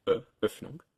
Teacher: There was Ö as in Öffnung, a rounded version of E